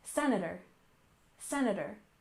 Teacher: First off, we have senator, with stress on the first syllable.